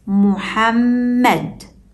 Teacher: even though we only see 2 written meme letters, we hear 3 meme sounds because the shadda doubles the second one